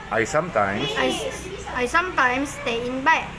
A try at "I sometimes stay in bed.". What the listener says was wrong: Pendek. Bednya pendek. I sometimes stay in bed.